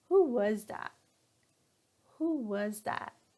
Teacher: Okay, our pitch goes down at the end.